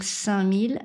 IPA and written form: sɛ̃mil (5000)